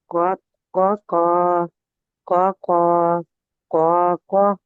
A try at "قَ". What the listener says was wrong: क्वा इसमें पेश की आवाज नहीं आनी चाहिए, क्वा नहीं करना, क